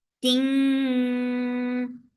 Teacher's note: This is ikhfa, so keep the sound in your nose for a longer time, and this ikhfa is light, so keep your tongue straight.